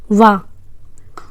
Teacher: वा जब बोलते हैं तो दंत, दांत प्लस ओष्ठ दोनों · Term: दंतोष्ठ